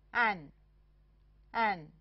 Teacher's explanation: 这个发音介于国际音标的▁an▁与▁n▁之间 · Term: 开口鼻音符